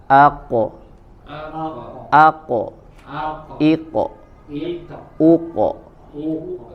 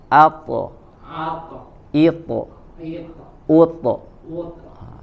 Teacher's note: ketika huruf qaf dan tha, maka sebagaimana dia dalam kondisi fathah, maka mengikuti tebal pantulan suaranya